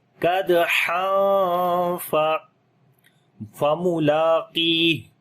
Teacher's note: دال کے اوپر جو ہے وہ قلقلہ کریں گے, کمزور قلقلہ ہوگا. تنوین کے بعد یعنی دو زبر کے بعد جو ہے وہ فا آ گیا, تو یہاں پر اخفا کریں گے, باریک اخفا ہوگا